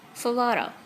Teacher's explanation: This f is fricative sound, voiceless, and it is not aspirated